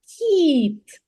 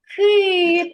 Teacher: у слові кіт перший звук М'який приголосний А у слові кит перший звук твердий приголосний